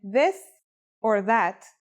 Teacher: it's pronounced with the tongue between the upper and the lower teeth it's quite easy to pronounce here's how to write the isolated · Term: voiced sound